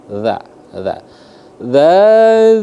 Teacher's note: di mana makhraj hurufnya ujung lidah disentuhkan dengan ujung gigi bagian atas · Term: huruf dza